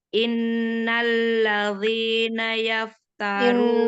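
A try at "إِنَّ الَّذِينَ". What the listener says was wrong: Innalladzi pakai zal, nggak pakai dho. Tipiskan, tidak ditebalkan.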